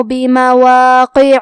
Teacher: حرف العین کی ادائیگی حلق کے درمیان والے حصے سے ہے